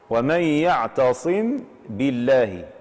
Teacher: وهنا جاء بعدها حرف الباء، هذه الميم ستخرج خروجا صغيرا من الشفتين مع الإتيان بالغنة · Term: إخفاء الميم الساكنة عند الباء